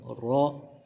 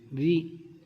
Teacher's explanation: رو کے اوپر زبر ہو تو ہم اس کو موٹا پڑھیں گے، رو کے نیچے زیر ہو تو اس کو باریک پڑھیں گے